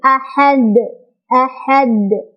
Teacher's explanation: Maka jadilah dia qalqalah dan qalqalahnya qalqalah besar ya, qalqalah kubra. Cara bacanya adalah dipantulkan, pantulannya besar.